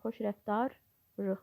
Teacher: Çünki lı şəkilçi rı şəklində tələffüz olunur. Nəticədə iki qoşa r samiti yaranır.